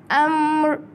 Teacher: Kalau kita baca itu huruf mim hujung dia. Kita nak adakan sedikit huruf ra kat hujung.